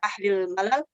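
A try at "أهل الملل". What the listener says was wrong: ahlil milal bacanya, jangan malal ya. Bacanya milal, itu jamak dari millah, artinya agama. Gitulah bahasa Arab, beda harakat aja beda makna itu.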